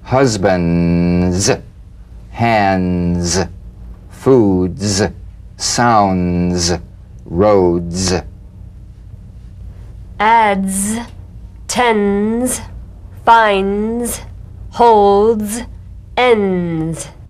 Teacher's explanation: The voiced tongue point plus tongue blade consonant. Press the tongue against the upper gum ridge for the D drum beat and peel the tip down a bit as the Z vibrates just before the tongue springs away. Z. Use a light staccato treatment without sustaining the Z- Z. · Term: resonant staccato Z, staccato Z